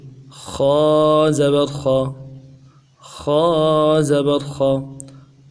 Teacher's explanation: خا کو ادا کرتے ہوئے ہونٹوں کو گول نہیں کریں گے، بالکل ہونٹ سیدھے رکھیں گے، خا کو ادا کریں گے اور موٹا کر کے پڑھیں گے۔ پھر سن لیجئے، خا زبر خا، خا زبر خا، زبر کو بھی ادا کرتے ہوئے کو کھینچیں گے نہیں، جھٹکا نہیں دیں گے نرمی کے ساتھ۔